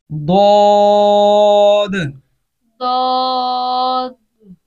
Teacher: द्वाद को अदा करते वक्त अक्सर जो गलती की जाती है कि द्वाद का जो अलिफ मद्दा है ना, उसकी आवाज़ भी वो नाक में अक्सर जो लोग पढ़ते, द्वाद खफीफ सी, कहीं किसी की ज़्यादा जाती है नाक में आवाज़, किसी की कम जाती है। तो द्वाद को जो इसके अंदर अलिफ मद्दा है पढ़ी जाती है अलिफ, उसको नाक से नहीं पढ़ेंगे।